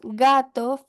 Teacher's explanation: la lengua apunta más bien hacia la parte posterior del paladar, casi rozando la úvula. Esto es así debido a este movimiento que ocurre que permite este fonema velar.